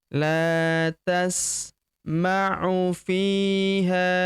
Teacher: Huruf fi kita panjangkan dua harokat karena terdapat ya sukun di depannya